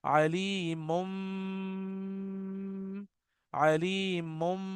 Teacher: मीम बगैर होंठ को मिलाए नहीं पढ़ सकते, और बा भी बगैर होंठों को मिलाए नहीं पढ़ सकते। तो होठों ने बंद तो होना ही है। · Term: इख्फा